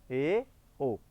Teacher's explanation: जिन स्वरों के उच्चारण में मुख समृत स्वरों से थोड़ा अधिक खुलता है, अर्थात ए, ओ। ए ओ में थोड़ा सा मुख ज़्यादा खुलेगा, ए ओ, इसमें मुख थोड़ा सा ज़्यादा खुलता है। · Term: अर्ध संवृत स्वर